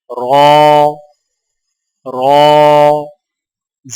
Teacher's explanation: رو کی ادائیگی میں زبان کی نوک کی پشت کو اوپر والے دانتوں کے مسوڑوں سے لگا کر موٹی آواز میں پڑھیں